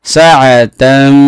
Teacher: তানবিনের পরে মিম আসছে ইদগামে মাল গুন্না হয়েছে, গুন্না করতে হবে